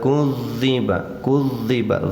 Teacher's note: za ditasydid musyaddad namanya, tahan dulu